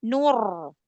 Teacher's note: Nunya tipis. Nur, tapi roknya tuh sukunnya udah langsung tebal kan ya, sudah langsung angkat pangkal lidahnya.